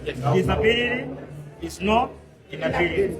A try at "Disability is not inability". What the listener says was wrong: Just like that, but a little slower. Disability is not inability.